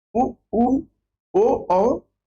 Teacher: साथ ही वृत्ताकार स्वर, तो ऐसे स्वर जिनके उच्चारण में ओठों का आकार गोल हो जाता है